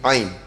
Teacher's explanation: ain ni dia tak ada satu sifat pergi ke hidung ataupun dipanggil hasyum. Kalau kita sebut ain tutup lubang hidung, dia pergi ke hidung, maknanya bukan ain.